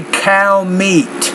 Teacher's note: Stress on both of those words